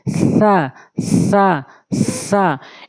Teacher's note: জিহ্বার আগাটা নিয়ে সামনে দুই দাঁতের আগাতা লাগাবেন